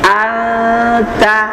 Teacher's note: Jadi nunnya atau lidahnya dilepas sedikit dari sandarannya maka itu akan terjadi bunyi ikhfa.